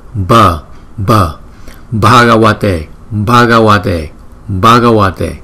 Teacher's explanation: Cái hơi trong miệng chúng ta đưa ra nhiều một chút